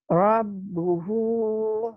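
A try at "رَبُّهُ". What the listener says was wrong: Maci agak agak nggak bisa R ya, cadel ya, cadel. Rabbu itu ya.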